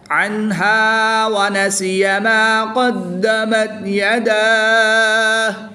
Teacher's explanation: کھڑی زبر کے بعد ہا کی پیش کو وقف کی حالت میں ساکن کر دیں گے تو یہاں پر مد عارض ہوگی. 2 سے 3 الف تک کھینچ کر پڑھیں گے.